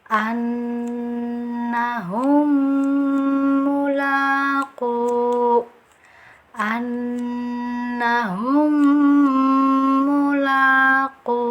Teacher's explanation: Cara bacanya kita sempurnakan tasydidnya. Kemudian berikan gunah atau dengungan, ditahan selama 2 atau 3 harokat.